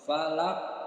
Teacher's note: Jadi huruf qafnya disukunkan, terjadi hukum qalqalah kubra. Falaq, pantulannya lebih besar dibandingkan dengan qalqalah sughra